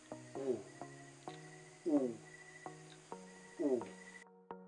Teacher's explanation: o o at panghuli ang tonyang u ito pa rin ay nasa likod na bahagi ng ating dila at nakaposisyon ang ating dila sa mataas